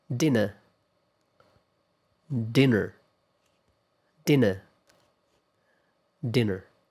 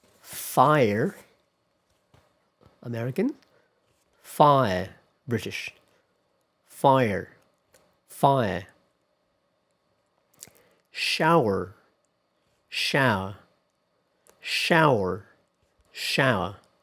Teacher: In American English, it is pronounced with an R-colored vowel.